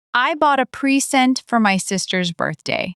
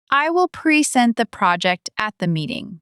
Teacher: the noun stresses the first syllable and the verb stresses the second syllable. First syllable, noun, second syllable, verb.